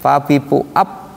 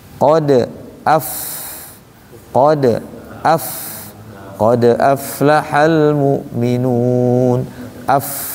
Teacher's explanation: Ini ujung ee gigi seri atas tempelkan ke bibir bawah bagian dalam. Tuh kan. Dan dia wajib ada udara yang keluar. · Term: fa